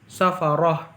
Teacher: ini roknya dibaca tafkhim atau tebal karena berharokat fathah